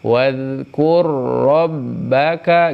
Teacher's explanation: Tidak ada tempo tambahan di sini mah. Jadi biasa ke ro tasydid. · Dan kalau yang mutamatsilain itu huruf yang pertamanya sukun dan huruf kedua berharokat, disebut, maka hukumnya adalah idgham. Jadi ro ini hilang, masuk ke ro berikutnya.